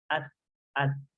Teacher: ketika dia kena sukun pun ada suaranya. Ada aliran suaranya. Ad. Tapi kalau po dia tidak ada udara yang sederas dan huruf ta. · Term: hams